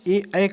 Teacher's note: स्वर ए का उच्चारण स्थान जो है कंठ तालव्य है